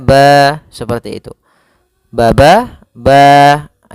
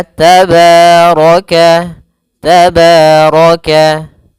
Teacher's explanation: Mad thabi'i panjangnya yaitu dua harakat.